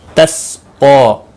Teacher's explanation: قاف کے اوپر کھڑی زبر ہے، ایک الف کے برابر کھینچ کر پڑھیں گے، باقی کسی بھی حرکت والے حرف کو کھینچنا نہیں۔